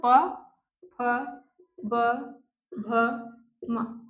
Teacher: तो ट वर्ग ट ठ ड ढ ण ट ठ ड ढ ण इस किससे बोले जाएंगे मूर्धा से फिर आएगा दंत दंत दंत से क्या बोला जाएगा इसके बाद वाला पूरा त वर्ग त द भ न फिर आ जाता है ओष्ठ ओष्ठ ओष्ठ से क्या बोला जाएगा प फ ब भ म